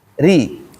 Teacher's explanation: Ketika berharakat kasrah dibaca tipis. Ketika dia kasrah berarti mulutnya ditarik ri ya.